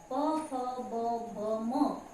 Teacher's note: इसका पहला अक्षर प है, इसलिए ये प वर्ग होता है। और इनको ओठ की सहायता से दोनों ओठों को आपस में मिलाने पर ही उच्चारण किया जा सकता है, इसलिए ये ओष्ठ्य वर्ण कहलाते हैं।